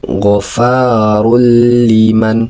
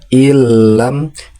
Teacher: nun mati atau tanwinnya dileburkan ke huruf lam sehingga tanwin maupun nun sukunnya itu tidak lagi terbaca dengan sempurna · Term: idgam bilagunah